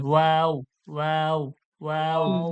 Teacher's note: দুই ঠোঁট গোল করে পাতলা আওয়াজে, দুই ঠোঁটটা গোল করবেন এবং পাতলা আওয়াজে বলবেন ওয়াও ওয়াও ওয়াও।